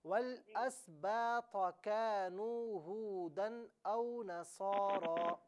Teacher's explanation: تو کو پر پڑھنا ہے